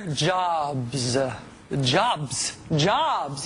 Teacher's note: it's one syllable starts with a consonant ends with a consonant ah is an easy vowel sound in the middle